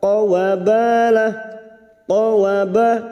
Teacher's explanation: ba fathah diikuti alif 2 harakat mad tabi'i